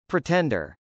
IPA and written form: pritˈɛndɚ (pretender)